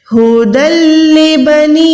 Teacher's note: نون یا زیر نی پہ یہاں پر چھوٹی مد ہے، اس کو 2 سیکنڈ ادا کریں